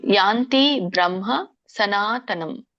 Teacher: ಮ ವ್ಯಂಜನ ಇದೆ ಸ್ವಲ್ಪವಾಗಿ ಅದನ್ನ ಉಚ್ಚರಿಸಬೇಕು